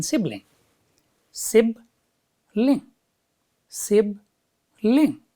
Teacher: there are just two syllables and where does the stress fall stress falls on the first on the first syllable